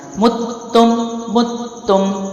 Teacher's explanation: سختی جماؤ اور پھر اگلے حرف کو جلدی چھوڑیں، لیکن قلقلہ نہیں کرنا۔